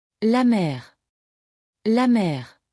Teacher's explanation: The R at the end is soft, almost silent.